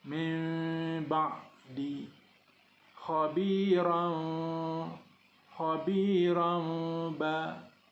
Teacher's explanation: Bunyi nun, bunyi tanwin bertukar kepada bunyi mim, tetapi tidak ditutup bibir 100%. Direnggangkan sekadar sekeping kertas antara dua bibir. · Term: iqlab